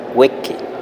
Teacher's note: Aquí la i se convierte en e incluso en una variante aún más abierta de e